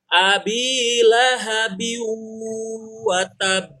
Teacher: kalau ba dibuat mati di akhir kalimat, dia pantulannya harus semakin jelas.